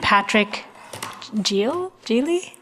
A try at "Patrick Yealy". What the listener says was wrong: My name is Patrick Yealy. It's like a Y.